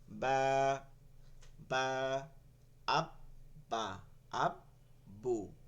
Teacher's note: বা হচ্ছে এই দুই ঠোঁটের ভিজা জায়গা